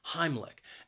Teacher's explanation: heimlich has two syllables and the stress is on that first syllable · Now, Heimlich has 2 syllables, and the stress is on that first syllable. Heimlich. And I think that second syllable, even though it's spelled with a CH, it's not a ch sound, it is more of a k sound.